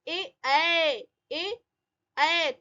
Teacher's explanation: तालु और कंठ के आसपास से आवाज आ रही है, ए तालु कंठे रहेगा, इसको ध्यान रखना है।